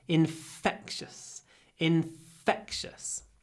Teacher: hold the F hold the F then a really short a